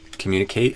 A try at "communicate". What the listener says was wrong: I put the stress on the mune instead of the kate. You put the stress on the kate.